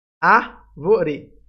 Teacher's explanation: A sílaba mais forte é o A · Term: proparoxítona